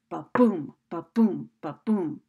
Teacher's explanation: Now, two beats or two syllables in which the first beat or syllable is unstressed and the second beat or syllable is stressed, like the beating of a heart. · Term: iambic rhythm